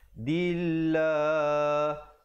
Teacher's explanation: Terus masuk di situ ikhfa 2 harakat. Dillah, lafzul jalalah iaitu perkataan Allah datang sebelumnya baris kasrah dibaca nipis. Dillah dan dipanjangkan 2 harakat.